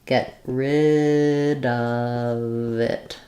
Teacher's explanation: So it's going to sound like I'm going to not let that first T out. Get rid, I'm going to just make a stop T.